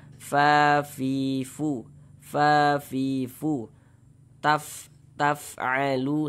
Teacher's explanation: Kemudian di sini ada huruf fa. Ketika kita mengucapkan huruf fa, maka ada nafas yang mengalir. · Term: sifat hamas